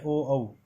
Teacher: ओ और औ इन दोनों का जो उच्चारण स्थान है वो कंठोष्ठम माना जाता है।